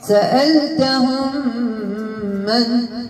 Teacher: الميم الساكنة والميم المفتوحة اتحد مخرجا وصفة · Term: إدغام